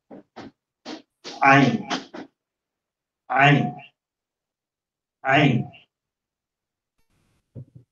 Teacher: Ito naman, wala siyang katumbas sa English. Dito siya nagagaling sa gitna ng throat.